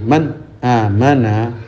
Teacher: nunnya ya ada dengung 1 harokat, ada sifat tawasudnya yaitu suara setengah melepas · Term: izhar